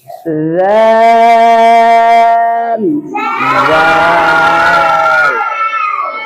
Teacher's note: এই হরফটা যেখান থেকে উচ্চারিত হয়েছে জিহ্বার আগা উপরে দুই দাঁতের আগার সাথে লাগিয়ে 3 আলিফ টেনে পড়তে হবে।